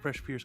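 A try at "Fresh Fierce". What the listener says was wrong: Fierce with an F. Fa, fa, fa.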